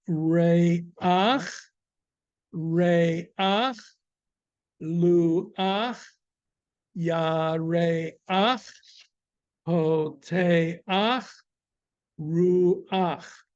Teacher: every time we come to the end of the word, the patach, the vowel will be pronounced before the chet. So instead of cha, you will have ach.